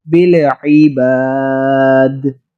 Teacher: عین حلق سے لفظ کو جیسے نچوڑے اور دال پر ہم کلکلا کر رہے ہیں